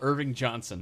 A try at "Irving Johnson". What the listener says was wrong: So you gotta pronounce the G's, dude.